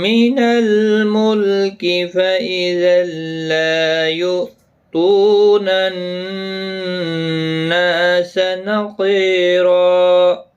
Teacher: آیت مکمل ہوتی ہے دو زبر کو بدل کر، ایک زبر کے ساتھ وقف کریں گے، ایک الف کی مقدار کے برابر کھینچ کر وقف کریں گے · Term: وقف بالابدال